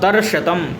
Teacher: हरिणी दर्शतम इति, हरिणी नामक जो स्वरभक्ति है वो रेफ और तालव्य शकार के बीच में होती है, इसलिए ये देखिए दर्शतम, यहाँ पे रेफ और सकार के तालव्य शकार के बीच में संयोग है, इसलिए यहाँ पर हरिणी नामक स्वरभक्ति है।